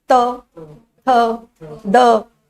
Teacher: आप बोलो त, थ, द। जीवा कहां? दांत को टच कर रही है ना, तो इनका उच्चारण स्थान हो गया दंत। ये कहलाएगा दंतय।